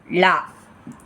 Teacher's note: நாவின் 2 பக்கங்கள் தடித்து மேல் அன்னத்தின் நடுப்பகுதியை தொடுவதால் லகரம் தோன்றும். இதனை பொது லகரம் என்கிறோம்.